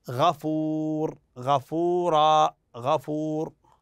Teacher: في هذه الامثله ينطق التنوين نونا ساكنه